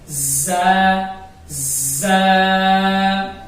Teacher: اب زبان کی نوک اور دونوں دانت، یہ اوپر اور نیچے دونوں دانتوں کے جو درمیان کا حصہ ہے، اس طریقے سے یہ دونوں دانتوں کو جب ملائیں گے تو زا ادا کرتے وقت جب دونوں دانتوں کو ملائیں گے تو اس میں کرنٹ سی ہلکی سی آواز آئے گی